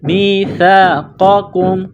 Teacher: قاف کو موٹا کرنا ہے، دوسرے کاف کو باریک کرنا ہے · سا کو پڑھتے وقت زبان باہر نکالیں گے